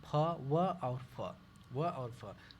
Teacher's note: दंतोष्ठ में देखिए दांत और ओठ दोनों का प्रयोग करते हैं, ऊपर से दांत तथा नीचे से ओठ का प्रयोग करते हैं